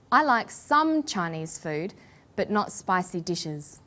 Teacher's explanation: we put the stress on the word some